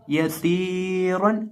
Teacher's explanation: सीन के अंदर सिटी की आवाज़ भी पैदा करके पढ़ेंगे, और रॉ को हम मोटा करके पढ़ेंगे